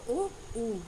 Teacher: Okay, देखिए, ओष्ठ word वे word होते हैं जिनका उच्चारण दोनों होठों यानी ओष्ठ के मेल से होता है। स्वरों में ओ और ऊ ओष्ठ हैं, क्योंकि इन्हें बोलते समय होठ गोल और संकुचित हो जाते हैं